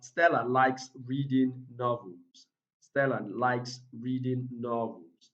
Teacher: so the stressed word here is novels